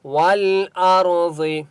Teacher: ول لام کے اوپر سکون ہے، واو کو لام کے ساتھ ملائیں گے. اور را کو پر پڑھیں گے، ٹھیک ہے.